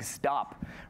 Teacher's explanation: Stop is voiced almost. It almost sounds like a D.